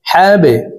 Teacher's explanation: বা কলকলার হরফ নিচের দিকে ধাবিত করে ধাক্কা দিয়ে উচ্চারণ করব।